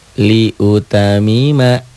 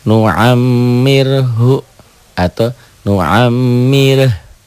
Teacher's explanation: Inilah gunnah. Mimnya bersidah bertasjid pendobel. Dobel ditahan dan dengung.